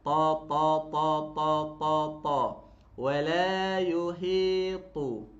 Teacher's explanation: Ta ni tebal. Okey, tebal hujung lidah dia sentuh kat belakang gigi atas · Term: huruf ta